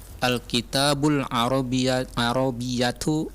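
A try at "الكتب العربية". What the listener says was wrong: Al-kutubul. Nah, dengarkan, Anda bilang al-kitab. Tak-nya berarti harus panjang. Kalau tidak ada panjang seperti ini maka pastikan dia al-kutub.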